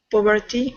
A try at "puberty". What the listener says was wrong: Puberty, more U sound. All right, like pure. Puberty. Puberty. No. Um, British would probably be much more careful about pronouncing the T.